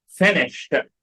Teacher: الإي دي هنا هتنطق إيه؟ هتنطق T.